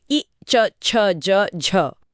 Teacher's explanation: फिर है तालव्य पैेटल्स। जब जीभ मुंह की छत यानी तालू को छूती है।